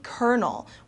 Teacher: the l sound is not pronounced at all it is uh turns into an R okay animony an animony